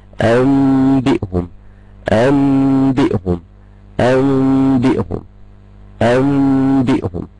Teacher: في ميم انت يعني انت تسمع ان النون دي كده خلاص، يعني هي مش ظاهرة خالص في النطق، اللي ظاهر عندي ميم بس الميم مش ظاهرة قوي، دي ميم ظاهرة مخفاة · في ميم بس تحس كده انها ميم بحاول اخفيها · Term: الإقلاب